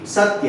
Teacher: सत्य, तो स पर ज्यादा जोर पड़ रहा है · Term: बलाघात